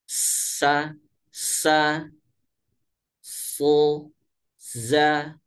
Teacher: sofir itu keluarnya ini melalui ruang yang sempit. Sehingga menyebabkan bunyi desis.